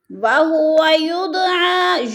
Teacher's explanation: دال ساکن ہے اور حروف قلقلہ میں سے ہے تو دال ساکن کو ہم ہلا کر پڑھیں گے